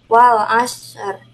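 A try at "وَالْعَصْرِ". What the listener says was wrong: Wal 'asr. Ro-nya tebalkan. Wal 'asr.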